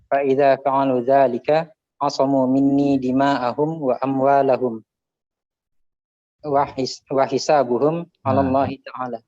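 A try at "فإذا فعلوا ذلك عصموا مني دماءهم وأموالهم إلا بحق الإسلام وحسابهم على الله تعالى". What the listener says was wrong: Ada yang kurang. Illa bihaqqil Islam.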